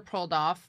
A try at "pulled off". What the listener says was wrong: Did you say pulled off and then say pull? It sounded like you said prolled off.